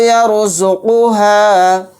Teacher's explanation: رائے ساکنہ کو موٹا یعنی پر پڑھیں گے، کیونکہ رائے ساکنہ سے پہلے یا کے اوپر زبر آ رہا ہے، تو را ساکن کو موٹا یعنی پر پڑھیں گے۔